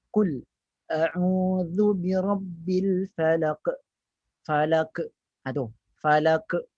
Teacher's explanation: Ada qalqalah, ada pantulan, tapi dengan pantulan yang rendah.